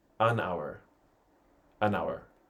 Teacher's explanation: usamos an con Our porque la H es muda